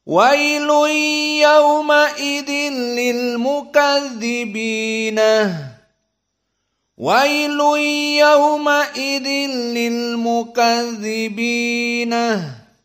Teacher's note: Maka nunnya di sini yang fathah harus dijadikan ha as-saqt.